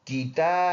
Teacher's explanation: کیتا کڑی زبر ایک الف اندازے سے لمبا کریں گے